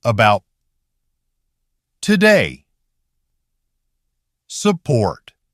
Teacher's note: Listen to the unstressed syllables. As the energy drops, the vowel reduces down to /ə/.